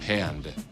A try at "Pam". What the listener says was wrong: M. There's no D. It's Pam. Here, it's P. M.